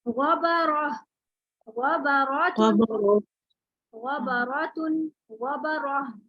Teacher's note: دونوں صورتوں میں را موٹا ہے